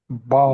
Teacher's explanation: মাখরাজ হচ্ছে দুই ঠোঁটের ভিজা অংশ থেকে বা উচ্চারণ করতে হবে